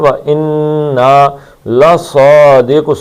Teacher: صاد کو موٹا پڑھنا ہے 2 حرکتیں